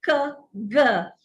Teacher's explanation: The back of the tongue rises up to touch the roof of the oral cavity.